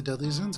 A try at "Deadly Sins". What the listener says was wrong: Sounded like you said Deadly Zins.